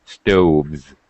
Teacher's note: straight from the V to the Z